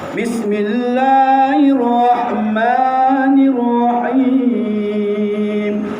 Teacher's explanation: Perkataan Allah itu jangan lebih daripada dua harkat. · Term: lafzul jalalah